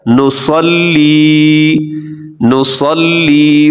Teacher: صاد موٹا ہوتا ہے اور لام کو مضبوطی سے پڑھا جاتا ہے